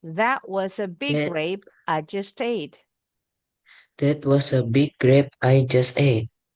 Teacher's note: I just sama at disambung just jadi huruf T-nya kedengaran.